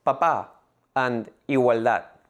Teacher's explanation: words in which the last syllable is the stressed syllable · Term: palabras agudas